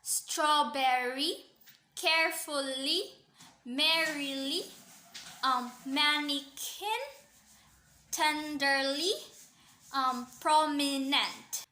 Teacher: a three syllable metrical pattern in poetry in which a stressed syllable is followed by two unstressed syllables